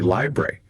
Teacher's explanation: Lots of native speakers, they'll just say library. That first vowel sound, poof, gone. Library, yeah.